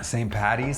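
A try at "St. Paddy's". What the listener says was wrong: Saint Paddy, not Patty. No, Patty is incorrect. Just some Americans decided they were going to butcher it somehow. But the full name is Patrick, right? St. Patrick. If you're going to shorten the word Patrick, it's Paddy. There's no Patty. That's like a female name or something like that.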